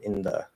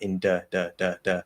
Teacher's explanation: So do not do a normal D. You want to do a dental D.